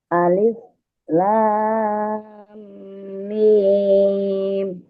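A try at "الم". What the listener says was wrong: Kurang lamnya kurang panjang itu. Coba ulangi lagi.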